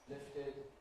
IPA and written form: ˈlɪftɪd (lifted)